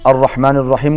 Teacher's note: الرحمن الرحیم کا را بھی پر پڑا جائے گا، موٹا پڑا جائے گا